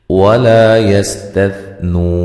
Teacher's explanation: سین کو باریک سیٹی سے ادا کریں گے، ہلانا نہیں ہے۔ ثا کو نرم ادا کرنا ہے، ثا اور سین میں فرق جو ہے وہ ضروری ہونا چاہیے۔